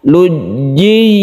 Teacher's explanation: Lujji sama-sama ditekan karena tasydid itu sifatnya ditekan ke hurufnya.